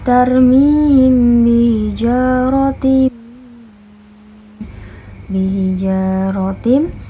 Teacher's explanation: Tarmihim bihijaratim, di sana terdapat tamarbuto dengan bacaan kasrotain bertemu dengan mim, hukumnya adalah idgham biguna